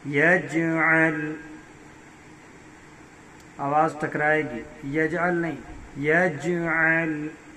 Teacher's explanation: یج جیم پر قلقلہ ہوگا، یجعل آواز ٹکرائے گی